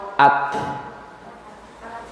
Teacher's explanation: Hamas ini emang mengalir nafas, tapi huruf ta, suara ta ti tu, kalau mau dengar ta ti tu, ada nafas sedikit yang keluar. Ta ti tu. Ketika sukun at. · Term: hams